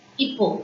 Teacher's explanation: H sound should not come. Hippo. It directly starts with I.